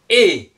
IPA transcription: e